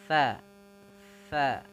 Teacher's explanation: sa ujung lidah kita menempel dengan gigi